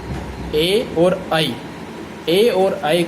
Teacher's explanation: कंठ तालु अर्थात एदितौ कंठ तालु अर्थात जो दीर्घ स्वर होते हैं ए और ऐ का जो उच्चारण स्थान होता है संयुक्त उच्चारण स्थान होता है और इन वर्णों की उत्पत्ति मनुष्य के कंठ और तालु के माध्यम से संयुक्त रूप से होती है